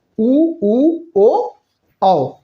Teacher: चारों स्वर है ये वृत्त मुखी होते हैं